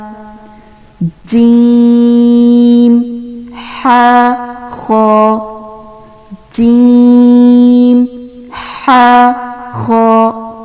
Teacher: جیم, حا, خا. اب دیکھیں جیم کو زیادہ لمبا کھینچ رہی ہوں میں, اور ہا اور خا کی مقدار کم ہے کیونکہ یہ 2 حرفی ہیں